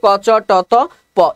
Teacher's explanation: ক চ ট ত প এই ধ্বনিগুলো হচ্ছে কি অঘোষ অল্পপ্রাণ